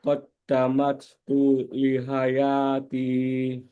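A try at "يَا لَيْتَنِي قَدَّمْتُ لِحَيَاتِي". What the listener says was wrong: Qaddamtu bukan qaddamat.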